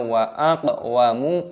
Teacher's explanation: qafnya diqalqalah dipantulkan suaranya